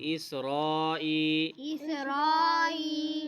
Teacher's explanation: ہم نے پڑھا تھا کہ اگر اسی لفظ میں اگر ہم الف مدہ یا حروف مدہ کے بعد حمزہ آ جائے تو وہاں پہ بڑی مد آتی ہے، تو یہاں پہ بڑی مد پڑھی جائے گی۔ ٹھیک ہے، اسرائی یا مدہ ہے اس لیے یہاں پہ ای بھی لمبا کریں گے